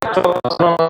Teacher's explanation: क्योंकि च का तालु से उच्चार उच्चारित होने वाला वर्ण है। च कहां से उच्चारित होता है? तालु से।